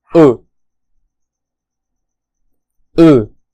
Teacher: this vowel is the open and short version of ooh this vowel sound is a very similar to English ooh that